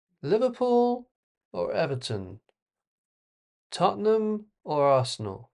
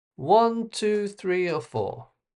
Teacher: the intonation goes down at the end, that shows that the choices are finished